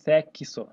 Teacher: Então, esse X tem o som de KS